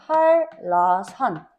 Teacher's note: 뒷말의 리을이 니은으로 바뀌는 앞말의 니은이 리을로 바뀌는 경우는 한라산 앞에 오는 니은이 리을로 바뀌어. 한 라산으로 발음될 수 없어.